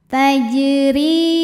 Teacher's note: huruf ro dibunyikan secara tarqik sebab ro berharakat kasrah cara bacanya dibaca dengan tipis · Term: tarqiq